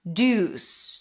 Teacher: That's that primary stress with an oo as in food.